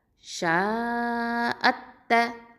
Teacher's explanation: நடுவில் இருக்கிற ஹம்சத்துல் வசல் உச்சரிக்க மாட்டோம்